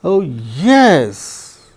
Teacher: Oh, yes, that is rise and fall. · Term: rise, fall